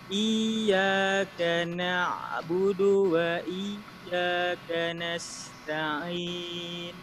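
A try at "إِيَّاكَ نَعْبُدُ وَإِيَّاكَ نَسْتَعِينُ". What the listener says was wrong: Nah, ini juga tadi huruf kaf. Ka-nya jangan ka tipis ya. Iyyaka na'budu wa iyyaka nasta'in.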